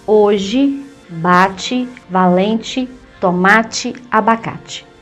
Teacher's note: Palavras terminadas em E e o som é de I.